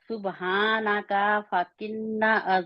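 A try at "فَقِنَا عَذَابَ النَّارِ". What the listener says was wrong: नहीं, का को लंबा नहीं करना, और किन्ना नहीं है, शब्द आप किन्ना क्यों कहते हैं, जहाँ पे शब्द नहीं है। फाकिना,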